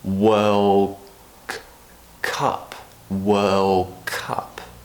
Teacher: to be pronounced together so what happens is in this situation the D at the end of world is actually getting pronounced more like a G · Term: assimilation